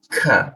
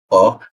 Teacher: Huruf K itu diturunkan. Jadi ada seperti hembusan udara tipis gitu.